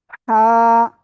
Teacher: গলা চেপে মুখ দিয়ে হালকা বাতাস বের করে আমরা এই অক্ষরটা উচ্চারণ করব।